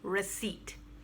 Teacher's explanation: no stress on the r stress goes on seat and the p is silent